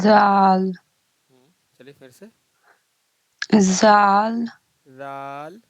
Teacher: جو زبان کی جو نوک ہے اس کو سامنے والا جو دونوں دانت ہے اس کے کنارے سے ملائیں